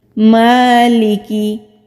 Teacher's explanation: میم کے اوپر کھڑی زبر ہے، ایک الف کے برابر کھینچ کر پڑھیں گے